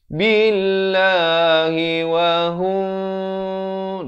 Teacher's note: Lafz jalalah dibacakan dengan nipis dua harakat.